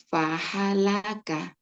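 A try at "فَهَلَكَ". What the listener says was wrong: pahalaka nggak ada yang panjang ya. Pahalaka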